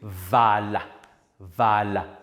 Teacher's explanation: a voiced labiodental fricative. Remember fricative, we said the articulators come close together just enough to produce an audible friction of air.